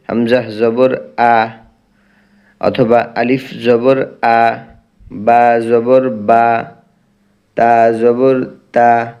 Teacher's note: সম্পূর্ণ টান মুক্ত পড়তে হবে অর্থাৎ এক আলিফ টান কোন আলিফ টান যেন না হয়ে যায় হরকত উচ্চারণের সময় কারণ এটা হচ্ছে হরকত হরকতের উচ্চারণ তাড়াতাড়ি আদায়